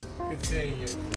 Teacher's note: words in this phrase are linked together there's no pause continue the D in good is not released with the tongue but instead it links to the s in seeing